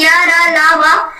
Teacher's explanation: इन वर्डों के उच्चारण में जो जीभ है वो कहीं भी मुख के किसी भी भाग को स्पर्श नहीं करती। यानी कि जो जीभ है इन वर्डों को बोलने में या, रा, ला, वा को जीभ मुख के किसी भी भाग को स्पर्श नहीं करती है इन वर्डों के उच्चारण में। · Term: अंतस्थ व्यंजन